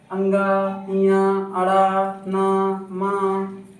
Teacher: सभी वर्ग का पांचवा अक्षर नासिक व्यंजन कहलाता है। जिसकी ध्वनि नाक से निकलती है।